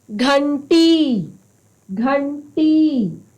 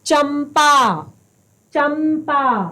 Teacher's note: श्वास कहां से निकल रही है नाक से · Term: अनुस्वार